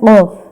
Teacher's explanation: قاف، یعنی زبان کی جڑ اور تالو کے نرم حصے سے ادا ہوتا ہے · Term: حروف لہویہ